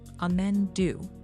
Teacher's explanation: Now just keep do a little longer and stronger than amen.